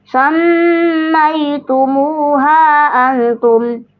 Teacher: Ditahan dan didengung dua harakat enggak buru-buru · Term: Ikhfa hakiki